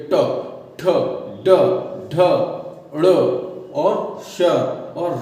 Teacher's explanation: इसमें जो जीभ है वो उल्टी होकर जबड़े में उल्टी होकर ऊपर छूती है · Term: मूर्धन्य वर्ण